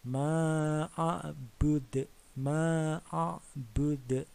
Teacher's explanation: bud ini dipantulkan ya karena qalqalah kubro. Ini hukum bacanya adalah qalqalah kubro.